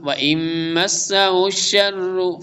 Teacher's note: نون ساکن کے بعد میم آ رہا ہے تو میم متحرک ادغام ہوگا